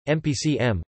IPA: mə.pə.t͡sə